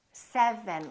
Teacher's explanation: So first, my lower lip is touching my upper teeth.